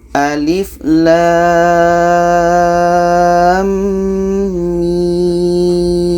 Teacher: lam ini kita panjangkan enam harakat setelah itu di tengah-tengahnya dengung dua harakat dan setelahnya ada mim enam harakat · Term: idgham mislan